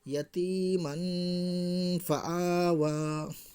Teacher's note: دو زبر کی تنوین کی آواز کو ناک میں چھپا کر گناہ کے ساتھ پڑھیں گے، جیسے یتیمن فآوا۔ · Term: اخفاء حقیقی